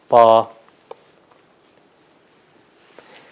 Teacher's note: طا موٹا ہے، اگلے اوپر والے دانت جو ہیں اس کے پیچھے لایا جاتا ہے اور اوپر کی طرف اس کو لگایا جاتا ہے، پھر اس کا صحیح تلفظ ہوتا ہے طا۔